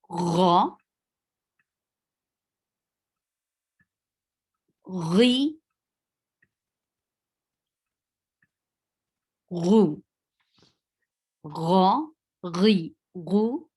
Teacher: from upper throat, and that is adna al-halq, and we pronounce ghain and kha